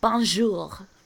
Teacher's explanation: there's very soft R's in French. You make it from the back of the throat.